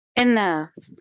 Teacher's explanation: It's a two-syllable word, and stress is on the second syllable. I have shown the syllables by blue lines, and the stress is shown by the blue arrow.